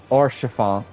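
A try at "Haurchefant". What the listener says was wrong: And then sh, there's like a little bit of an S sound more than like a sh. R, sh, fon. T is very silent. the T is not. So it's R, chiffon.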